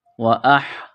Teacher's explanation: گلے کے درمیان سے زور لگا کر ہا کو نکالیں گے